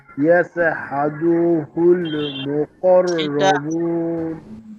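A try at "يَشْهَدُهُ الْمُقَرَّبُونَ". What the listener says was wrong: শিনটা আরো স্পষ্ট করতে হবে। হাদু টান হচ্ছে, টানটা হবে না। ইয়াশহাদুহুল,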